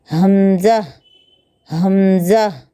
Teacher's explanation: हमज़ा, हलक के आखिरी हिस्से से अदा होता है